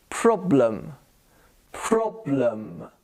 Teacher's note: The E becomes a schwa sound.